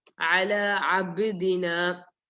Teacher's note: So ba with sukun you have to do qalqala.